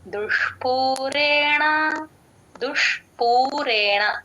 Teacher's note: దుష్ దు కి ష ని యాడ్ చేసి చెప్పాలి ఆ ష షణ్ముఖ ష కొంచెం ముద్దగా పలకాలి టంగ్ ట్విస్ట్ చేసి చెప్పాలి